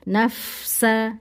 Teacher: Ada dirkhawahkan, dialirkan suaranya. Begitu selesai suara desis fa baru masuk ke sin. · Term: fa sukun